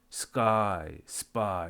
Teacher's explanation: S 다음에 오는 발음은 뿌뜨끄로 해라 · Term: unaspirated